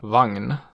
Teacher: Myös yhdistelmä <gn> äännetään usein /ŋn/